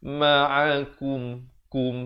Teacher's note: Di sini kaf baris depan bunyi ku. Bukan bunyi ko. Jadi bila bertemu mim jadi kum gitu.